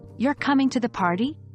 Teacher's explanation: Notice how the pitch of the voice rises at the end, indicating that the speaker is seeking confirmation or expressing surprise. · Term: rising intonation